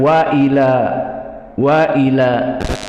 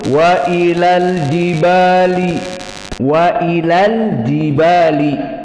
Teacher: Kapan mad tabi'i? Jika diwaqafkan wa ila, wa ila. Adapun jika disambung wa ilal jibali, wa ilal jibali, maka ilal jibali tidak ada mad tabi'i.